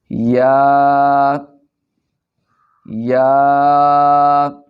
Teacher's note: یا کو پڑھتے وقت زبان کا درمیانی حصہ تالو کے درمیانی حصہ سے ملتا ہے۔